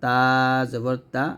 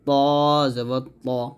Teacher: তাটা হলো পাতলা হবে, তটা মোটো হবে, দুইটা মাখরা যদিও এক, জিব্বার আগা সামনের উপরে দুইটাতে গোড়ার সঙ্গে লাগাবো, তাহলে এটা হবে পাতলা করে তা জবর তা, আর এটা হবে মোটো করে ত জবর ত এরকম।